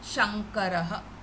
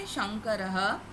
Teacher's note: So in Sanskrit, that dot sound, it will be converted to nga, because the next alphabet is ka. So in the ka, the last alphabet, the Anunasika, is nga. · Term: Anuswara